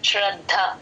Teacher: అలా రావాలి శ్ర నస్కర అందరూ అలా అనకూడదమ్మా ష్ర క్లియర్ గా వినిపించాలి శ్రద్ధ ద కింద త వత్తు మహాప్రాణం ఉంది గమనించండి